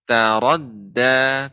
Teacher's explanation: Ra-nya tebal, tapi dalnya tipis. Taradda, tidak boleh taradda, salah.